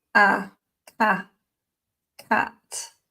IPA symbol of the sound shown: æ